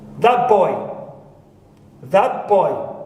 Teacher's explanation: when ta is followed by ba and influenced by it, the ta becomes pa